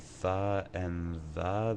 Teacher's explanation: Tha and The is the interdental. It's made just inside the teeth.